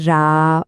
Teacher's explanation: કરીને જોઈએ જ્યારે આપણે રા બોલીએ છીએ ત્યારે શું થાય છે આપણી જીભ ઉપરની તરફ વળે છે અને તાળવાના બરાબર ઉપરના હિસ્સાને સ્પર્શે છે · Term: મૂળધન્ય વર્ણ